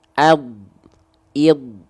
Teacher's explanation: mengalir suaranya sifat dia rokwah mengalir suaranya ya mengalir suaranya oke nah kalau huruf Dal Dal sukun dia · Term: huruf dhad